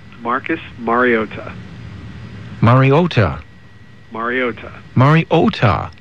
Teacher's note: There is emphasis on the ta. It's just not as much as was made out on the ESPN broadcast.